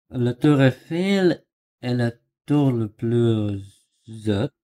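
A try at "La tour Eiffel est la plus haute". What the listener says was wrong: Нет, связки нет.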